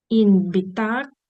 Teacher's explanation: Н може вимовлятися як м